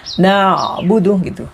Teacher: Kemudian ain dalam lafaz na'budu. Ain ini juga harus bersambung ya, harus hidup. Tidak boleh dibaca seperti hamzah sukun. Tidak boleh dibaca dengan iyyaka na'budu berhenti, tapi harus bersambung.